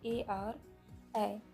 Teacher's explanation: कंठ और तालु से निकलने वाले वर्ण है आपके ए और ऐ। इन्हें कंठ तालु वर्ण कहा जाता है।